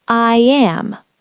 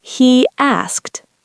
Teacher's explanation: the intrusive y. This happens after an e sound, like I am.